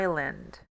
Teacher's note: o som do S ele vai ser mudo ele vai ser nulo